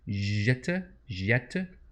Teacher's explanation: And with a little schwa at the end there.